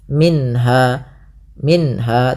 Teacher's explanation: Kemudian pada lafal minha ada bacaan izhar halqi, yaitu suara nunnya dibaca dengan jelas